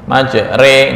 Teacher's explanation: ini tujuan dibaca imalah adalah untuk menyatukan dua suara menjadi satu menyatukan dua suara antara a untuk fathah kemudian I untuk kasrah nah digabung antara Fatah dan kasrah menjadi e